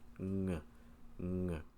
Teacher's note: As you make this ng sound, you will feel air flow from your nose, not your mouth. The air comes here, not here, up around here, through your nose. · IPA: ŋ